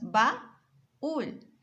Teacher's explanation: De la palabra baúl, vemos las vocales AU separadas. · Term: hiato